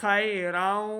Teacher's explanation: خا حروف مستعلیہ سے موٹی آواز کے ساتھ